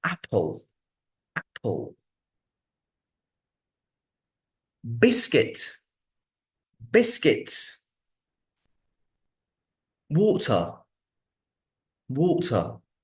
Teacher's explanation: so I put the stress on the first syllable so I pronounced the firstable a bit stronger a bit maybe